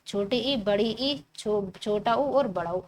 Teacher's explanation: जिन स्वरों के उच्चारण में मुख कम खुला होता है। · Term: संवृत स्वर